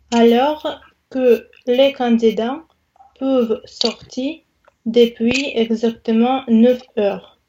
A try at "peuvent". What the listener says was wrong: C'est pas peu, c'est peuvent, c'est ouvert. Le son peuvent, alors que les candidats peuvent sortir.